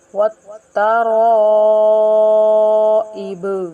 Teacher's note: با حروف قلقلہ میں سے ہے اور وقت کی حالت میں ساکن ہو رہی ہے، اس لیے تھوڑا قلقلہ کر کے پڑھیں گے۔